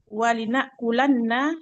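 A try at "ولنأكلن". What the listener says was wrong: Lamnya lam qasam juga fathah.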